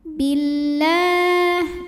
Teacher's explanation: lam jalalah dibaca secara tarqiq sebab huruf sebelumnya berbaris kasroh, maka lamnya tipis, bunyinya la. Billah, la disebut dengan matobi'i muqaddar karena barisnya fathah panjang, maka dibaca panjang, lamnya 2 harokat.